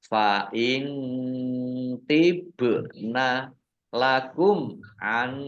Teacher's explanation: Fa'in tibna nun sukun bertemu dengan huruf to bacaan ikhfa dibaca samar-samar. Ba sukun bacaan kolkolah dibaca memantul ditampakkan pantulannya.